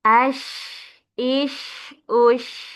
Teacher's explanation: Kita lanjutkan huruf sya ya yang menyebar memiliki sifat tafasyi. Menyebar udaranya.